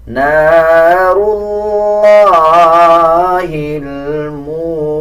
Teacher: وما ادراک ما الحطمہ، نار اللہ الموقدہ، نار اللہ، را کے اوپر زبر یا پیش آ رہا ہو تب را کو پر یعنی موٹا پڑھا جاتا ہے۔ اسی طرح لام کے اوپر کھڑا زبر ہے، 1 سیکنڈ لمبا کیا جائے گا، اور لام کے اوپر شد ہے، مضبوطی کے ساتھ لام کو ادا کیا جائے گا۔